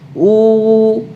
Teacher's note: disertai dengan apa memadukan kedua bibirnya atau mecucu itu ya Uh pangkal lidahnya naik uh sambil apa mecucu dengan sempurna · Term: wow sukun